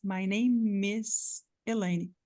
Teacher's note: não é o M junto com o E. E sim o M junto com o I do is.